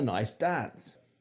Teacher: the long a is further forward in the mouth and more open than the cockney R.